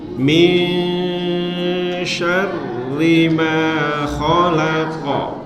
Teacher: bukan min, bukan ming, tapi samar-samar.